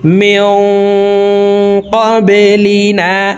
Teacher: নুন সাকিনের পর ইকফার হরফ কফ আসছে এই কারণে এই নুন সাকিনকে নাকের ভিতরে লুকাইয়া গুন্নার সহিত পড়ব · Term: ইকফা গুন্না